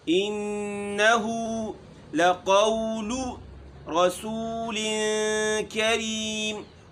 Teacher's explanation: را موٹی ہے، سو ہونٹوں کو گول کریں گے، سین میں سیٹی کی آواز ہے، لن کریم یہاں اخفا ہوگا، رسول کریم، کریم میم جو ہے جہاں بھی کہیں آئے گا میم ساکن یا نون ساکن کی صورت میں اس کو ہم ہلکا سا ناک میں لیں گے۔